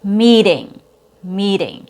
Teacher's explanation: So, we have the long e followed by a t sound. In this case though, the T has a fast T sound.